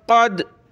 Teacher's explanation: قاف کلرفل ہے یعنی اس کو موٹا کر کے پڑھنا ہے، جس طرح را کو موٹا کیا اس طرح قاف کو ہم نے بڑا کر کے پڑھنا ہے۔